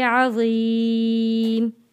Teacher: जब हम वक़्फ़ करेंगे मीम का पेश ख़त्म होकर यहाँ जज़म आ जाएगा, तो हम पढ़ेंगे अज़ीम।